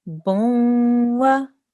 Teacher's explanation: you're making a nasal sound when you're joining this ba with the dhamma to the waw with the shadda because of this tanween.